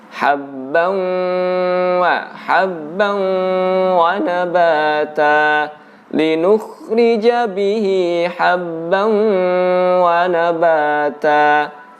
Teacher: tanwin ketemu wawu selain dimasukkan tapi juga didengungkan dan ditahan.